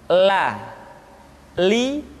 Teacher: huruf la diucapkan dengan mengangkat ujung lidah kita dengan disentuhkan dengan langit-langit di depan